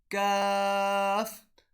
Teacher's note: کاف کو ادا کرنے کا طریقہ یہ ہے جب ہماری زبان کا آخر والا حصہ تالو کے اگلی سائڈ سے ٹکر کھائے تو لفظ کاف ادا ہوگا